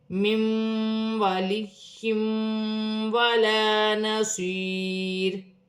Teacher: دو زیر کی تنوین کے بعد واو مشدد آ رہی ہے، تنوین میں غنہ بھی کیا جائے گا، ملا کر بھی پڑھا جائے گا